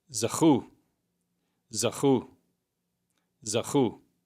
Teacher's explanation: there's a kaf in the middle here, and it receives a soft fricative pronunciation, ch, ch. And the letter vav is functioning as a vowel, u, zachu.